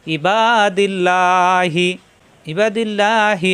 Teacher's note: এখানে আল্লাহ শব্দের ডানে জের আসছে আল্লাহ শব্দ পাতলা হবে লা হবে ল হবে না ইবাদিল্লাহি ইবাদিল্লাহি এই হিলবে আবার সদের